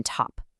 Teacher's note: the T is aspirated. It has that strong puff of air just like the T in top. Again, feel the difference with your hand.